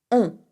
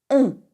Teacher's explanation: the nasal O, a sound that does not exist in English, okay? So you've got to practice it because it's not a natural sound to you, English speaker.